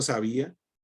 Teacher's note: sabía es una palabra grave que lleva el acento no en la última sino en la penúltima sílaba